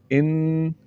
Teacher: اس کو لمبا کریں گے، تو غنہ کس طرح ہوگا، ان، آواز کو ناک میں لے جا کر تھوڑا سا لمبا کیا